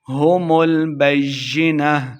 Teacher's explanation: یا مشدد ہے، با کو یا کے ساتھ ملا دیں گے۔